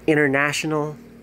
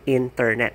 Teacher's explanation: The letter T in American accent could be silent, especially when you hear people say internet